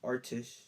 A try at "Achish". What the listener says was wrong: Why you keep putting the R in there? Achish. No T either.